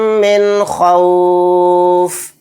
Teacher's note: نون کی آواز کو ظاہر کر کے بلا غنہ کے جلد پڑھیں گے یعنی اس میں غنہ نہیں کریں گے۔ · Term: اظہار